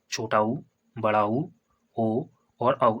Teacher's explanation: बे स्वर जिनके उच्चारण में हमारे ओंठों का आकार गोल या वृत्ताकार होता है, व्रतमुखी स्वर कहलाते हैं ना। · इसमें क्या होता है ओंठ गोलाकार बनते हैं, जब हम इसको उच्चारण करते हैं तो हमारे ओंठ की जो आकृति है वो गोलाकार बन जाती है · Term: वृत्तमुखी स्वर